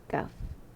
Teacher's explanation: So dia tak boleh tebal lah. Tak boleh tebal macam qaf. Sebab pangkal lidah tu tak diangkat tinggi sangat. Dia cuma makhraj dia di depan sikit daripada pangkal lidah tu.